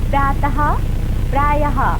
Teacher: विसर्ग का उच्चारण हल्के हो के समान होता है